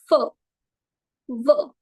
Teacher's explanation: As the name suggests, the lower lip, the lower lip is the active articulator and the upper teeth are the passive articulators.